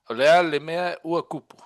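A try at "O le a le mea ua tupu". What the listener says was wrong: Remember, do it again, but be emphatic, emphasize it. So drag it out. Olea le mea uokupu. Because that sounds better than when you're sounding it or reading it short.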